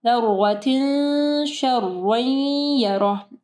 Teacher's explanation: तनवीन के बाद या है, इदगाम हरूफ में से है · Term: इख्फा गुन्ना